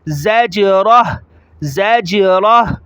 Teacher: دوسری بات یہ کہ را کو موٹا پڑھیں گے، اور تیسری بات یہ ہے کہ زا کو جیم کے ساتھ ملاتے ہوئے جیم کو ظاہر کر کے پڑھیں گے جھٹکے کے ساتھ